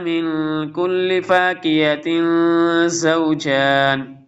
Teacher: نون ساکن کے بعد حروف حلقی کے علاوہ آ رہا ہے تو اس لیے اخفا ہوگا